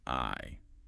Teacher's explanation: Your mouth opens wide for the a sound and then your tongue moves up for the e sound.